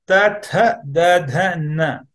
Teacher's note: all the five sounds are produced where the tongue is touching right below, right behind the upper teeth